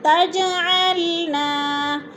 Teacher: ہے تو الف مدہ، لا پہ پھر الف مدہ، تجعلنا، تج جیم ساکن ہے اور حروف قلقلہ میں سے ہے تو ادھر قلقلہ کریں گے یعنی جیم کو ہلا کر پڑھیں گے